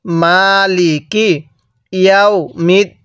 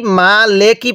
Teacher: মিমের মধ্যে টান দিব, লামের মধ্যে টান দিব না।